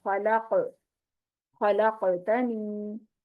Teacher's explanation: अब यहाँ पर खलक़तनी में कॉफ साकिन है, इसलिए यहाँ पर इसकी आवाज को जो है ना हिला के पढ़ेंगे, यानी बाउंस होके आवाज आएगी।